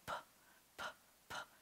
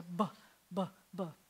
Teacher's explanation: the same exact shape of your lips does a p, p, p. And if I make sound come out at the same time, then it's a b, b, b. So that's a vocalized and an unvocalized sound.